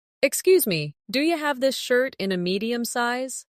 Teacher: Listen to how do you becomes do ya in natural speech.